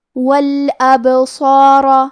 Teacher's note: کیونکہ با بھی حروف القلقلہ میں سے ہے تو ہم یہ حرف کو ہلاتے ہوئے یہ کلمہ کو پڑھیں گے